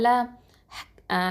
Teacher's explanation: நுனி நாவு மேல் பகுதியும் இந்த முன் 8 பற்கள் ஈறு அந்த இதில் வச்சு சொல்லணும். ஹஃபத்தல் லிசான் இது.